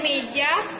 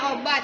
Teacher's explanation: lidah diangkat dalam ketinggian sepertiga di bawah vokal tertutup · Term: vokal semi tertutup